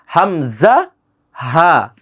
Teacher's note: হামজা হা দুইটা হরফ এ হলকে শুরু হতে দুইটা হরফ উচ্চারিত হয়